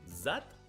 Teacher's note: Z is the voiced alveolar fricative.